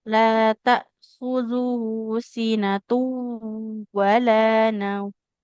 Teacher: Oke, bukan sinatun ya. Kalau ada tanwin bertemu waw itu dibacanya langsung melebur ke huruf wawnya.